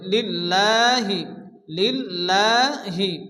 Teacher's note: আল্লাহর লামকে বারিক অর্থাৎ লা উচ্চারণ করে পড়তে হয়। এখানে লিল্লাহ হবে, লামের উপরে খারাজ জবর এগানি পরিমাণ টান দিয়ে পড়তে হবে।